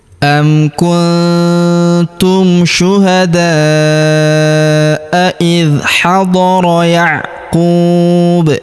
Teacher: huruf da kita panjangkan 4 atau 5 harokat karena di depan huruf da terdapat alif yang di atasnya terdapat tanda garis bacaan panjang.